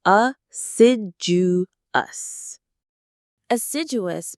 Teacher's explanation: The stress is on the second syllable sid.